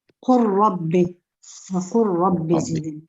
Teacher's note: We're making idgham the lam into the ra